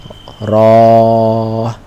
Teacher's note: জিহবার আগার উল্টা পাশ সামনের উপরের দুই দাঁতের মাড়ির সাথে স্পর্শ করে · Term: তাকরারের হরফ